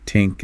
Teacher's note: the way the TH sound is often pronounced as a T or a D